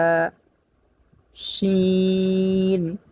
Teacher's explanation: শিন হচ্ছে 6 নম্বর মাখরাজ থেকে জিহ্বার মধ্যখান তার বরাবর উপরে তালুর সঙ্গে লাগিয়ে শিন